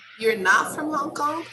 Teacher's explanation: When you show surprise and you just want to check information, you just use the statement form, affirmative or negative, and then you put an intonation of question.